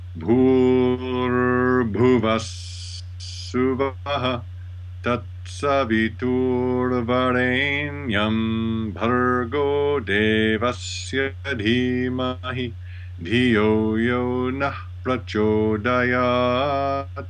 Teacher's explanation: So you may have heard the three tones, low, middle, and high.